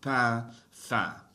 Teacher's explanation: You don't really hear the N being pronounced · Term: nasal sounds